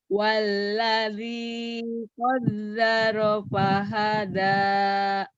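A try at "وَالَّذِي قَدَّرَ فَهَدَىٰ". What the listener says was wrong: dalnya keras, dada didi duduk. Walladzi qaddara fahada.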